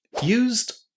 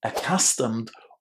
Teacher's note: when you say used and accustomed, you don't put any extra syllables with the ed there. Used one syllable, accustomed, also without any extra syllables.